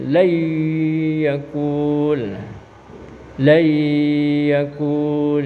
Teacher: harus dibaca lebur nun sukunnya, terus harus didengungkan. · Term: idgham